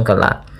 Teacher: Idgham yang tidak disertai dengan gunnah, sehingga hanya masuk saja tanwinnya ke huruf lam tanpa kita tahan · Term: idgham bila gunnah